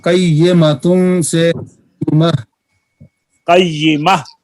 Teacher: وقف میں یہ تا ہائے ساکن سے بدل جاتی ہے. مثلا قیمۃ سے قیمہ.